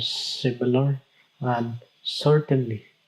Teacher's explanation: consists of one stressed syllable followed by two unstressed syllables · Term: dactyl